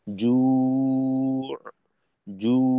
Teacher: এখানে যেহেতু আমাদের ঠোঁটের দুইটা অবস্থা, জু এর ক্ষেত্রে প্রথমে জিম ওয়াও গোল, একেবারেই গোল করে তিন আলিফ পরিমাণ টানবো। টানার পর খুব দ্রুত ঠোঁটটাকে একেবারে খুলে তারপর আইনের উচ্চারণটা, অর্থাৎ জু, জু, এরকম।